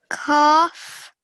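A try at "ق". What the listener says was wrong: Try and say it with a thicker sound. Qaf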